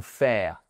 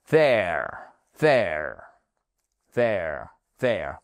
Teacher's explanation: Et je vous rappelle que ce n'est pas there ou faire. Sortez votre langue entre les dents du bas et les dents du haut et les cordes vocales, elles vibrent.